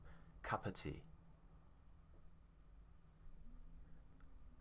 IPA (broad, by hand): ə